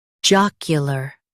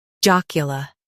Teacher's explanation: U.S. stresses J-A-A-K, UK stresses J-O-K.